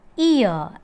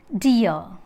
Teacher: During the articulation of the diphthong ear, the glide movement of the tongue begins from a position just above front half close, above front half close here.